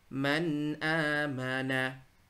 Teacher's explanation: Nah, nunnya nggak boleh terlalu lama. Tanpa guna kamilah. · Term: idhar